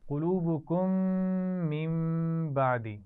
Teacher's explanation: من بعدی نون ساکن کے بعد با ہے تو میم سے بدلیں گے اور غنہ بھی کریں گے